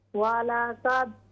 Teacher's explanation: वलक़द कलकला कीजिए दाल में